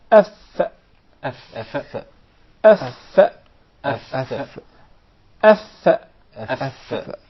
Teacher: is articulated from between the inside of the lower lip and the tips or the edges of the two top front incisors